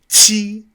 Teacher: Qi, very aspirated, very strong, kind of like TCH, but with your tongue against the back of your bottom teeth.